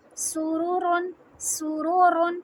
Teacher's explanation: सीन सीटी की आवाज़ के साथ रा हैवी